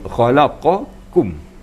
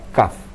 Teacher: Sebab qaf itu anak lidahnya naik, qaf. Tapi kalau kaf itu lidahnya turun dan bagian lidah di depan